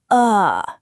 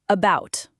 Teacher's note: Ah, the schwah, the most common sound in English. It's that weak lazy uh sound like the a in about or the o in today. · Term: the schwa sound